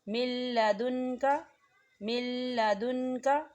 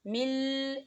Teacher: ہم میم کو جو ہے لام کے ساتھ ملائیں گے اور نون کو جو ہے لام کے اندر مدغم کریں گے